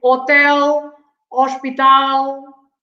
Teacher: we don't pronounce the h at the beginning of the word